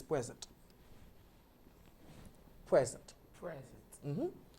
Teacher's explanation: When it's a noun, the stress falls in the first syllable, which is present.